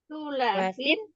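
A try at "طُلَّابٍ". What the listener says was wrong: Tullabin. Tullabin. Lamnya tasdid ya. Nanti maknanya beda kalau tasdidnya nggak dibaca.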